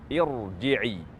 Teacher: Irji'i, huruf ra bersukun meskipun huruf sebelumnya berharakat kasrah, namun ia dibaca tafkhim karena huruf yang berkasrah tersebut adalah hamzah wasl. Maka kata irji'i dibaca tafkhim, bukan dibaca tarqiq.